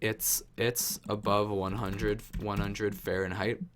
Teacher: we don't put emphasis on the H because it just flows better